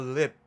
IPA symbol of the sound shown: p̚